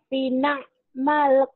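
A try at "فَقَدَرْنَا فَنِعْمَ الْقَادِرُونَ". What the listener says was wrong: Bukan finakma, terbalik. Fanikma. Fanikmal kodirun. Terbalik.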